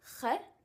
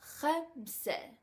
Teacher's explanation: if you guys can hear, it's coming from the bottom of my throat.